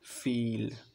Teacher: ফিল শব্দটা উচ্চারণ করে দেখো, এটা উচ্চারণ করার সময় আমাদের জিহ্বাটা সামনের দিকে অগ্রসর হয়, ফিল, তাই এটা হচ্ছে ফ্রন্ট ভাওয়েলস।